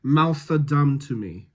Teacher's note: I think you could go with turning that TH into an S sound.